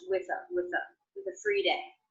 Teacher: Now I pronounce the ending th unvoiced, with a. Sometimes when people link the ending th that is unvoiced into a voiced sound, like the vowel schwa, they will voice it and say with a.